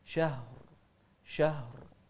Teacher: كذلك الهاء في شهر نوضح الهاء هنا